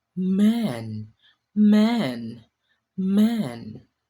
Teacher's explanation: we need to also press both our lips firmly together since it is also a bilabial. It is also voice. · you need to let the air flow out through your nose. It is a continuous hum.